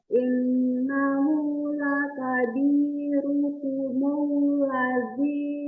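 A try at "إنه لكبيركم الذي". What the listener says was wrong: Ya, diulang. Itu lamnya jadi ketebalan.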